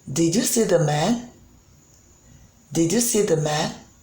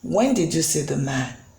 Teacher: you can see that the pitch is rising at the end that is why it is rising intonation